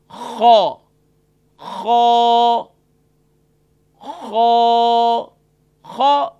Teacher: یہ top of throat یعنی ادنائے حلق سے ادا ہوتا ہے